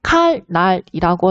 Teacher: 니은이 앞에 유음, 리을을 만나서 리을로 교체되는 유음화 현상이 일어나고 있는 것을 확인할 수가 있었습니다